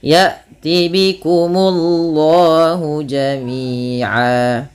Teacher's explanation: munya tipis baru Allahnya tebal